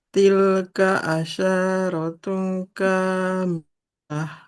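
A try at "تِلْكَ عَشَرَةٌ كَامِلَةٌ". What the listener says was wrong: Masih panjang shinnya. Jangan asyaratun.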